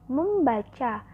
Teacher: Misalnya pada proses penyembuhan prefiks me pada kata dasar baca akan memunculkan bunyi sengau M yang semula tidak ada menjadi ada. Yaitu me ditambah baca, maka disebut membaca.